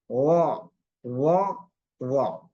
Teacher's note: Jadi dia terangkat ke langit-langit. Tengah-tengah lidah kita terangkat ke langit sehingga pengucapannya agak berat. Jadi tidak oh tapi agak berat pengucapannya karena posisi lidahnya kita terangkat begini.